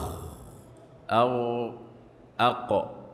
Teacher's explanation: ولا ينطبق مع الخاء والغين والقاف، إنما يستعلي الصوت غير منطبق بالحنك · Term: مستعلية